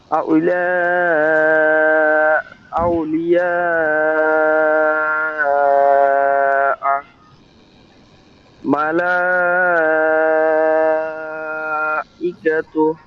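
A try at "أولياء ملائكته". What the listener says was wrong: আরো টান হবে। না হুজুর, আরো টান হবে।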